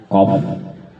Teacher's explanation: huruf qaf itu di tenggorokan, di dekat pangkal lidah, arahkan ke langit-langit